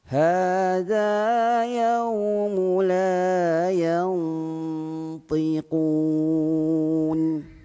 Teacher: ketika kita menuturkan huruf Zal hujung lidah kita keluar sikit hujung lidah sahaja yang keluar jangan sampai keluar sampai ke tengah lidah hujung lidah makn kita